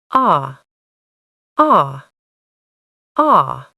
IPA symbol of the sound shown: ɒ